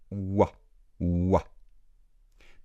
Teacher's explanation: C'est un peu comme avoir le son OU suivi du son A. Et si on dit ces 2 sons très rapidement, on fait OUA.